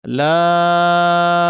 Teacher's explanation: লামকে আমরা তিন আলিফ টানবো তিন আলিফ কতটুকু ইয়া মুসা বলতে যতক্ষণ লাগে ইয়া এক আলিফ মু এক আলিফ সা এক আলিফ ইয়া মুসা বলতে যতক্ষণ লাগে ততক্ষণ আমরা বলব লাম এরপরে মিম এটাও তাই এবং লামের শেষে লাম বানানের শেষে একটা মিম আছে।